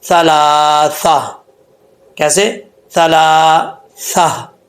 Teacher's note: یعنی تا کو جو ہے وہ ہم ہا سے چینج کر دیں گے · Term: گول تا